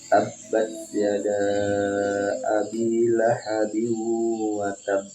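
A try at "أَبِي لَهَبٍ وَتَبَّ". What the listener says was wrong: Lahabiyun, masukkan di hidung. Ya, belum masuk, belum gunnah.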